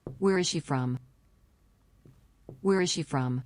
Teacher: he starts with a high voice at the beginning of the question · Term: information question